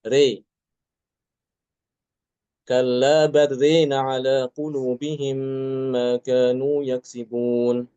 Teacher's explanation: Ya, ron-nya dia e alif pada ro itu diimalahkan. Imalah itu adalah bacaan antara fathah dengan kasrah ya. Jadi tidak dibaca ro juga tidak dibaca ri tapi tengah-tengah re